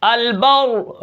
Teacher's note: البر، وقف بالاسکان کروں گا، البر، یہ را باریک پڑھی جائے گی، حالانکہ را کے اوپر زبر ہے، اس کو میں موٹا نہیں کروں گا کیونکہ اس کے اوپر وقف بالاسکان ہو رہا ہے، را ساکن ہے، پیچھے زیر ہے تو را باریک ہوگی · اب یہاں پر میں وقف بالاسکان کروں گا، البر ساکن کیا، البر را موٹی ہوگی، اس زیر کا لحاظ نہیں کروں گا